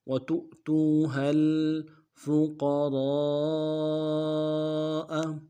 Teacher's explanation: واو کے اوپر جو حمزہ ہے اس کے ساتھ ملائیں گے، یہ حمزہ بشکل واو ہے، جھٹکا دیں گے ، تو تا کو واو کے ساتھ ملانا ہے، واو مدہ